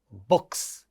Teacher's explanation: Therefore, if in a words like books, this word ka, book ends with a ka sound, which is a voiceless stop. So, the plural marker sounds as sa and we say books.